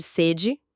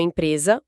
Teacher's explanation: Em sede de sentir sede, o som é aberto, E. Em sede de uma empresa, o som é fechado, E. É a mesma letra para 2 fonemas distintos.